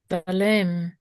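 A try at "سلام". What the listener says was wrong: Salam. Salam. There's a long ah sound. The Arabic language did not suffer from the Canaanite shift. So it still preserves a long ah.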